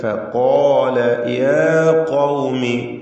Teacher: ഖാല എന്നതിൽ ഖാഫിനും അതിന്റെ അലിഫിനും തഫ്ഖീം നൽകി ഉച്ചരിക്കുക, തടിപ്പിക്കുക. ഫഖാല യാ ഖൗമി, ഖാഫിന് വീണ്ടും തഫ്ഖീം നൽകുക.